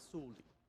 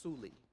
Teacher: the o is so quiet that you basically don't hear it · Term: o drops out